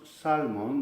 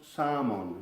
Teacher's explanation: pasa muchísimo que la consonante después de la vocal se hace muda